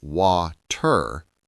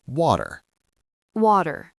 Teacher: In American English, the letter T can sound different in the middle of a word. When a T is between two vowels, it often sounds like a soft D.